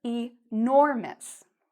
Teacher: notice the stress is on the nor part. So, I say nor louder and longer